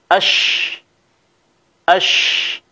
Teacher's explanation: Cara mengucapkan huruf shin adalah dengan kita menekan tengah bagian lidah ke langit-langit yang berada di atasnya disertai dengan menyebarkan angin dari dalam mulut